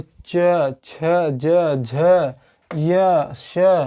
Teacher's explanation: तालव्य मतलब जब हमारा इनको बोलने में हमारा जो जिह्वा है, जिह्वा हमारे तालु में टच होगा। ठीक है, मुख के ऊपरी भाग में सीधे टच होगा।